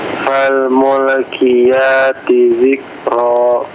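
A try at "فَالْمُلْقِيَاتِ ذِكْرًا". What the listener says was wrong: Afwan, dijelaskan qafnya mulqi.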